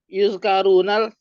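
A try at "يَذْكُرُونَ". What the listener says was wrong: Biasa aja, jangan dimabit.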